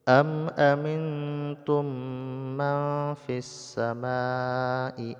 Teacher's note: mim langsung dibaca pada tasdid mim yang kedua dan didengungkan kemudian nun sukun bertemu dengan Fa ikhfa ya didengungkan juga